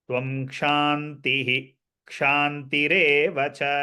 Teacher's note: visarga followed by the last akshara ksha, we'll have to pronounce the visarga explicitly